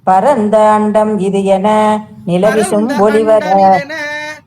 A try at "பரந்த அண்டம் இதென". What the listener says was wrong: பரந்த அண்டம் இதென அப்படி சேர்த்திக்கோங்க.